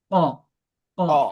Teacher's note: জিবার গুড়া তার বরাবর উপরে তালুর সঙ্গে লাগাইয়া দুই নুক্তাওয়ালা কফ